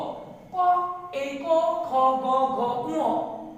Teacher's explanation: এই ধ্বনিগুলো উচ্চারিত হয় কণ্ঠ থেকে, কণ্ঠ থেকে · এই কবর্গীয় ধ্বনিগুলো উচ্চারণ করতে কণ্ঠের সাহায্য লাগে, এই জন্য এদের নাম হলো কণ্ঠধ্বনি